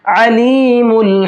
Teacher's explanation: अलीमुल में आइन है, हमजा नहीं है, आइन के साउंड के साथ में पढ़ना है, मिडिल हलक से निकालना है। और हकीम के अंदर बड़ा हा है, छोटा हा के साथ हकीम नहीं पढ़ना है, हकीम पढ़ना है।